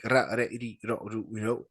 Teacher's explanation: You have slightly the flap sound on your tongue.